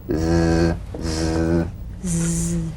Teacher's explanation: The Z vibrates in that very small open space between the tongue and the upper teeth. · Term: voiced S sound fricative